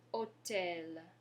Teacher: So remember, your H is mute, so we're not pronouncing the H.